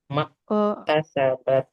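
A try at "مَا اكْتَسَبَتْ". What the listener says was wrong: nah, kalau mak tasabat itu nafasnya nggak keluar ya. Nah, untuk aliran nafasnya dia belum keluar ya. Wa 'alaiha mak tasabat. Ak. Ak. Kemudian ats. Oke, untuk sifat tak dengan kafnya ya. Nah, ini aliran nafasnya masih perlu dilatih ya. Soalnya belum keluar ya. Ak, ats.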